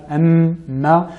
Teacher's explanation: la lettre mim, m, nous avons la partie buccale et la partie labiale et la partie nasale